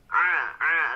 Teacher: Jadi keluarnya itu di wasatul haq ya, untuk huruf ain itu di tengah-tengah tenggorokan. Tinggal ditekan jemaah di tenggorokannya.